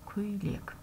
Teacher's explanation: Көйлек деген сөзде бізде и дыбысы кездеседі, және бұл жерде дауыссыз и, себебі ол дауысты дыбыстан кейін тұр екен.